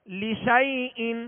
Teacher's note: یا لین کا، نرمی کے ساتھ پڑھیں گے، بغیر کھینچے بغیر جھٹکا دیے نرمی کے ساتھ معروف پڑھیں گے